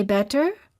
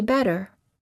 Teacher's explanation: the T becomes a fast D in the following cases between two vowels